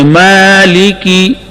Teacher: مالکی کے لام پر اور کاف پر جو زیر ہے معروف پڑھیں گے. مالکی، کھڑا زبر، کھڑے زبر کے اندر ایک الف کے برابر مد ہوتی ہے.